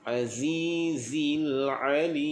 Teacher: Di sini perlu pada penekanan tu. Pastikan zai bunyinya umpama bunyi lebah.